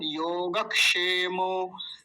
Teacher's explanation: योगक्षेमो, योगक्षे, कुछ लोग बोलते हैं योग क्षेमो, क्षेमो, ऐसे, क्षेम, वो वाला क्षेम नहीं होगा, योगक्षेमो, क्योंकि क भी है, होता है इसमें, क और मूर्धन्य शकार को मिलके बनता है क्ष